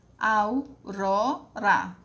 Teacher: Tem 3 sílabas, é trissílaba. A sílaba mais forte é o ró e está na penúltima sílaba. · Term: paroxítona